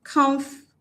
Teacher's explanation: So automatically, what it means is that footable will not be stressed. So the stress will fall on the first syllable, comf.